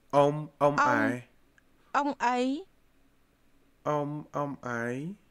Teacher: The ấy with the rising tone is what turns you into he.